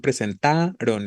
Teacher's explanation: la tónica está en presentaron en Ta no efectivamente en la penúltima sílaba Así que es grave terminada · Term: la sílaba tónica